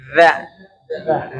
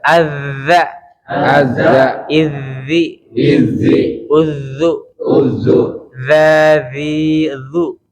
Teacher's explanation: Yang terakhir adalah huruf zal tuh ya. Ujung lidah kita nempel gigi atas.